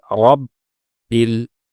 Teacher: র এর উপরে যেহেতু জবর এসেছে, এজন্য র মোটা করতে হবে। কিন্তু আমরা আমাদের তেলাওয়াতের সময় রকে অনেক সময় মোটা করে পড়ি না, যেটি ভুল।